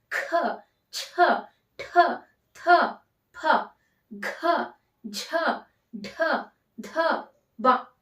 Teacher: ಮೈನಲ್ಲಿ ಮೊದಲನೇ ಪ್ರಶ್ನೆ 10 ಸರಿಯಾದ ಉತ್ತರ ಏನು ಈ 10 ಮಹಾಪ್ರಾಣ ಅಕ್ಷರಗಳು ಮಹಾಪ್ರಾಣ ಅಕ್ಷರಗಳು ಅಂದ್ರೆ ಹೆಚ್ಚು ಉಸಿರಿನ ಸಹಾಯದಿಂದ ಉಚ್ಚಾರ ಮಾಡ್ತಕ್ಕಂತಹ ಅಕ್ಷರಗಳು